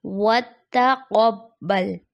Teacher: اس کی درست ادائیگی وتقبل، وتقبل درست ادائیگی نہیں، درست ادائیگی ہے وتقبل، تا کی باریکی پھر اس کے برابر میں قاف، قاف کی موٹائی کے ساتھ